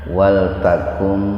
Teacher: Jadi membacanya itu huruf nun diidghamkan, dimasukkan ke huruf mim dengan mendengung. Biar terdengar mendengung, tahan dua ketukan. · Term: idgham bigunnah